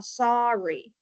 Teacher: it's not saying or, right? It's making a schwa or a short vowel.